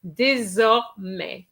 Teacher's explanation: remember an S between two vowels is a Z sound